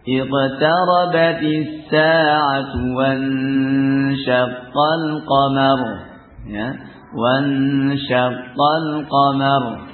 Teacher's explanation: ra sukun sebelumnya fathah. Ini baca tafkhim ya.